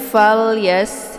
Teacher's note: Kemudian fal yas, ini falnya dibunyikan jelas ya, lamnya fal ya, dialirkan saja, bukan dipantulkan. Jangan fal yas ya keluar bunyi le, itu bacaan yang salah, tapi fal yas ya.